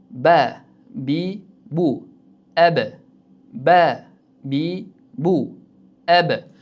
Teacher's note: Tebrana degan harf hisoblanar ekan. I deb to'xtab qo'ymaymiz balkim ab deb tebratib chiqazamiz harfni.